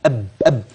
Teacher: والباء اب اب شفتين يبقى الميم والباء الثنين مخرج ايه واحد